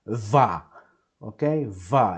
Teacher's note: It's a very stressed va with a lot of energy, a lot of power.